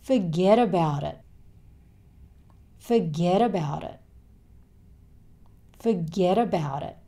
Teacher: He stops himself just before he makes the t sound. So this whole thing becomes forget about it.